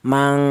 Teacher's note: cara bacanya ikhfa, ada dengungnya dua ketukan, mang seperti itu.